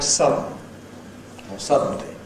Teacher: [ ə ] and [ n ] (schwa and [ n ]) can coalesce to give syllabic [ n̩ ]. This is what happens in a word like “sudden” [ ˈsʌdn̩ ] or “suddenly” [ ˈsʌdn̩li ].